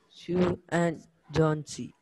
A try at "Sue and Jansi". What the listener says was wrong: No breaks between and Jansi. Say it continuously. Sue and Jansi. And Jansi. A, N, Jansi. And Jansi.